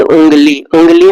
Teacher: उंगली में उ है इसका उच्चारण नाक से हो रहा और इसके ऊपर चंद्र बिंदी लगी है तो इसे हम अनुनासिक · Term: अनुनासिक स्वर